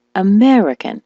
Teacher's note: the word American, as you know, is stressed on the meh